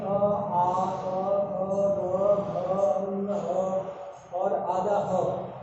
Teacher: तो याद रखेंगे अ, आ, और आधा ह, ये सभी कहाँ से बोले जाएंगे? कंठ से बोले जाएंगे।